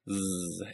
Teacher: You can get a feel for this by putting your hand on your throat and saying zzz. You should feel buzzing in your throat. Zzz. And that buzzing means that zzz is a voiced consonant.